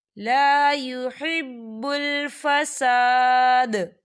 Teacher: وَالنَّسْلَ، وَاللَّهُ، وَاللَّهُ لا يحب الفساد، لا يحب الفساد، یہاں دیکھیں فساد، یہاں پر آیت ختم ہو رہی ہے جب آیت ختم ہوتی ہے تو عین والا حروف جو ہے وہ ساکن ہو جاتا ہے، تو دال جو ہے یہاں پر ساکن ہو جائے گا اور یہاں پر قلقلہ ہوگا